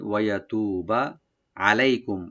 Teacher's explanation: ওয়া ওপেন রাখবেন, ইয়া ওপেন থাকবে, তু একালে টানবেন, বাতে কোনো টান নাই